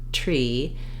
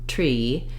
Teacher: And then to add the T to the R, tree, basically, I have to change how I'm making my R slightly in order to be able to lift the tongue in the front to make the T.